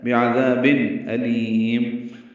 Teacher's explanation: لام کو لمبا کریں گے، میم میں ہونٹ بند کر لیں گے، اظہار شفوی ہوگا